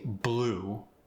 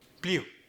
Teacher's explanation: And then the U sound goes to like an EU sound.